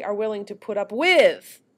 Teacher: It's that we're not ending on a strong, stressed syllable. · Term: end focus